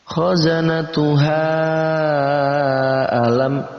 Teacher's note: ada mad tabi'i bertemu dengan hamzah di lain kata, maka kita baca 4 sampai 5 harokat